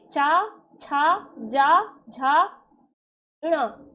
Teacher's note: चा वर्ग के वर्णों का उच्चारण करेंगे तो यह तालु मतलब जीभा को छूते हुए निकलेंगे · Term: तालु वर्ग